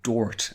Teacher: That's because there's a suburban rail line in Dublin called the Dart, D-A-R-T, but a lot of people started pronouncing it Dort and changing those A sounds to O. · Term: Dort speak